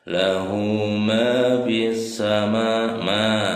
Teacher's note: Jadi huruf alif lam samsiah itu dipastikan lamnya tidak dibaca ya.